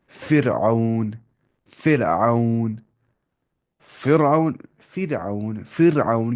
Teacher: اگر را ساکن سے پہلے زیر آ رہی ہے تو ہلکی آواز پڑھیں گے. فرعون، فرعون، فرعون، فرعون، فرعون، کیونکہ را ساکن سے پہلے زیر آ رہی ہے.